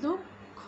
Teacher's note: উচ্চারিত হচ্ছে না, উচ্চারণ না হয়ে কি উচ্চারণ হচ্ছে এখানে, দুঃখ, এই ধ্বনিটা একটু দুবার হয়ে যাচ্ছে, একটা অল্পপ্রাণ ধ্বনি এবং আরেকটি মহাপ্রাণ ধ্বনি